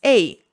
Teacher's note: we don't pronounce the H, so it's A, not hey